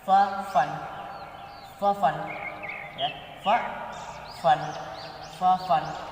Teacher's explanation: Oke, selanjutnya huruf fa. Fa ini juga termasuknya dengan huruf ba bisyafatain, keluar dari dua bibir, ya, dari dua mulut, ya, depan.